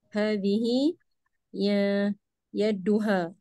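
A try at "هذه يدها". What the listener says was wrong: Ya duha, dal. Ya duha, dal. Dalnya ya. Ini apa Nana sedikit menyinggung pelafatan dalnya aja. bacanya seperti di tas tidak. Tak.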